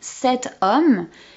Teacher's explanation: it starts with actually a vowel sound, even though you have this consonant H, it's always silent in French